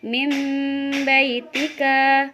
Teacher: Yang kedua iklab, yaitu mengganti atau mengubah suara nun sukun atau tanwin itu menjadi mim